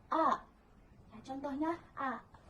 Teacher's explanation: vokal rendah, yang di mana lidah berada pada posisi rendah menjauhi langit-langit